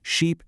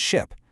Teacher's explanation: It's in that vowel sound. You've got the long tense e in sheep and the short relaxed i in ship. Once you can see that difference, it becomes so much easier to say the difference.